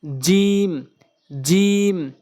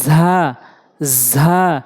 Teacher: জিম জিহ্বার মাঝখান উপরের তালের সঙ্গে আর ঝা হচ্ছে জিহ্বার আগা উপরে নিচে দুই দাঁতের আগার সঙ্গে